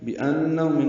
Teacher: بأنہم نون مشدد پہ غنہ ہے